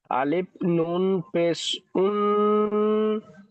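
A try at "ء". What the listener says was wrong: ওটা আলিফ বললেন, ওটা ভুল বললেন, ওটা হামজা।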